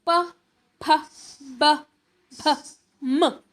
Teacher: अस्माकम् उच्चारणस्थानं अस्माकम् उच्चारणे ओष्ठौ सम्मिलितः, हमारे उच्चारण में ओठ, हमारे ओठों को हम सम्मिलित यानी पास में लाते हैं, मिल जाते हैं। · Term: ओष्ठ्याः